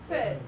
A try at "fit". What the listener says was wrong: Really good. But open a little more.